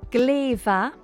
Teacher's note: the M softens to a V. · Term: Lenition